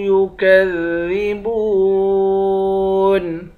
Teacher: با کو واو کے ساتھ ملا کر واو کو بھی ایک الف کی مقدار کھینچ کر پڑھیں گے